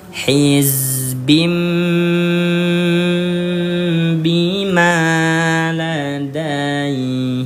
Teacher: Ya, si huruf nunnya ayah bunda diganti dengan huruf mim nih yang ada di atas ya. yang awalnya dibaca hizbin berubah menjadi hizbim langsung masuk ke huruf mim